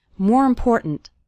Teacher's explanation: the word more kind of runs into the word important and the last syllable of important kind of gets reduced we don't say important we say important more important then trying